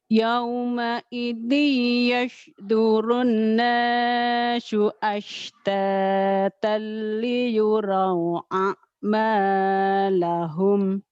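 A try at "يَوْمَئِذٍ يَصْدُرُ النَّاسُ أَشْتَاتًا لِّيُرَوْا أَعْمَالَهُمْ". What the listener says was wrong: Ya, nanti tolong dipisahkan antara suara sod sama sin sama shin. Jadi masih ada bias di situ ya.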